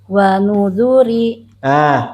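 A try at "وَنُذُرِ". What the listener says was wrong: Pakai nada barusan. Wa nudhuri. Du-nya jangan panjang. Ejah, Bu. Kalau tadi pakai wa nudhuri, itu du-nya jadi kepanjangan.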